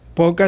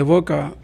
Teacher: Por ejemplo, poca se distingue de boca, con el mismo ejemplo que estábamos hablando anterior, porque la P se opone a la B, ya que la P es oclusiva, bilabial y sorda. La B también es oclusiva, bilabial, pero es sonora